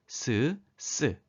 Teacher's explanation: 혀 끝과 윗 잇몸이 닿진 않고 그 좁혀진 사이로 공기가 빠르게 흘러가며 나는 소리입니다